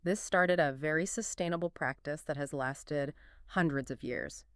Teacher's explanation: She really stresses started, very sustainable practice, and hundreds. Those are the words carrying the main meaning there.